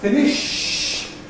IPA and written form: ˈfɪnɪʃ (finish)